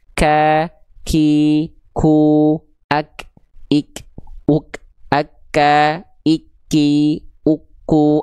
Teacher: contoh huruf kaf itu dibaca gini, ada percikan nafasnya. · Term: hams